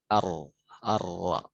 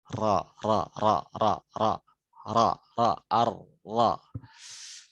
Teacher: bedanya ro itu agak melipat karena punggung lidahnya kena.